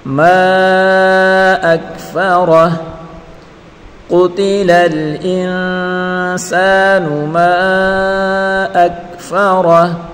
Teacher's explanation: میم الف سے ما الف مدہ ہے، اس کو ایک الف کی مقدار کھینچ کر پڑھیں گے، اور الف حروف مدہ کے بعد اگر حمزہ آ جائے تو وہاں مد ہوگی، تو یہ مد منفصل ہے، اس کو کھینچ کر پڑھیں گے، اور حمزہ کو کاف کے ساتھ ملا کر پڑھیں گے، فا کے اوپر اور را کے اوپر پڑیر کرے بغیر کھینچے پڑھیں گے، را کو پر پڑھیں گے اور ہا کو ساکن کریں گے.